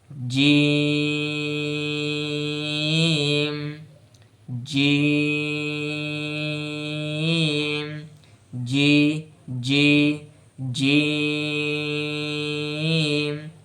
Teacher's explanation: তো মাখরাজ হচ্ছে 6 নম্বর মাখরাজ জিবের মধ্যখান, ছবিতে দেখলে বুঝতে পারবেন, জিবের মধ্যখান তার বরাবর উপরের তালুর সঙ্গে লাগিয়ে, জিবের মধ্যখান উপরের তালুতে লাগাবো একদম বরাবর অঞ্চলে, যে অঞ্চলে জিবের মধ্যখান আছে সেই অঞ্চলে উপরে, একদম সামনেও না পিছেও না, বরাবর অঞ্চলে জিভকে লাগাবো।